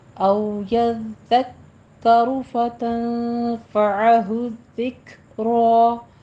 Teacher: काफ के ऊपर हमस करेंगे और रॉ को पुर पढ़ेंगे